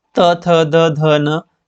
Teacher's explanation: जो थ है ये दंते में आएगा